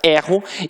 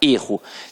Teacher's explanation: o verbo tem a pronúncia aberta, erro, e que o substantivo tem a pronúncia fechada, erro